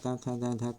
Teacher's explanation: का खा गा घा कंठ से बोला जाता है